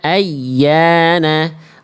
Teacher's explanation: penekanan yang lebih kuat pada huruf ya bertasydid sehingga suara bacaan ya tasydidnya terdengar lebih nonjol lebih tinggi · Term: nabar